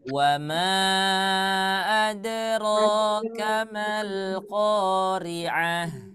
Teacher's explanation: Ada tanda alis kemudian bertemu dengan alif berharokat. Ya, jadi dibaca 4 sampai dengan 5 harakat.